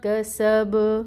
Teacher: پھر آگے با ہے، با کو ساکن کریں گے۔ جب اس کو ساکن کریں گے تو یہاں پہ قلقلہ ہوگا